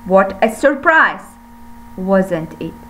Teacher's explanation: For the first part I raise my tone, but for the second part I should fall my tone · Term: falling tone